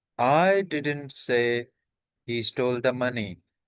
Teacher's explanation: अब I पे stress है